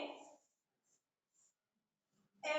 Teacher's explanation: अग्र अर्ध विवृत स्वर में हमारा मुख जो है जब हम उच्चारण करते हैं तो आधा खुला होता है।